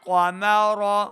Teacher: قاف حروف مستعلیہ سے موٹی آواز کے ساتھ پڑھنا ہے، را کو بھی یہاں پہ ہم نے پر پڑھنا ہے، را کے اوپر زبر کی حرکت ہے۔